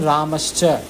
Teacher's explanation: visarga becomes sha when chavarga is following